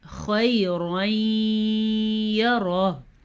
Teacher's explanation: ادغام بالغنہ ہو رہا ہے، غنہ کرنا ہے